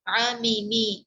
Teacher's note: अगरचे मीम मुतहर्रिक है लेकिन फिर भी गुन्ना तो पाया जा रहा है। क्यों? क्योंकि गुन्ना इसकी लाज़मी सिफत है, हम गुन्ना के बगैर हर्फ मीम को अदा ही नहीं कर सकते।